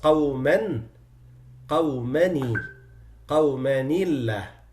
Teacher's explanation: So the tanween of the noon of the tanween had a kasra on it. That's why Allah becomes muraqqaqa. قومنillah because of the kasra on the noon of قومن, which is not written.